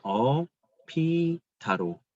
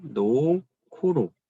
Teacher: 자음과 자음이 만나는 자리에서 비읍과 히읗이 결합해서 피읍으로, 히읗과 기읍이 결합해서 키읔으로 나는 소리입니다. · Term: 거센 소리 대기